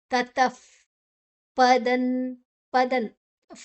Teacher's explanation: ಆದನಂತರ ವಿಸರ್ಗದ ಉಚ್ಚರ ಉಚ್ಚಾರಣೆ ಅಲ್ಲಿ ಉಚ್ಚಾರಣೆ ಅಲ್ಲ ಅದು ನಾವು ಶ್ವಾಸವನ್ನ ಬಿಡುವಂತ ಬಾಯಿಯಲ್ಲಿ ಶ್ವಾಸವನ್ನ ಬಿಡುವಂತ ಶಬ್ದ ನಮ್ಮ ಹಲ್ಲಿನ ಮಧ್ಯದಲ್ಲಿ ಬರುವಂತ ಗಾಳಿಯ ಶಬ್ದ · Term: ವಿಸರ್ಗದ ಉಚ್ಚಾರಣೆ